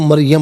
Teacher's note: تو جب آپ رکیں گی تو مریم پڑھیں گی, میم کو ساکن پڑھیں گی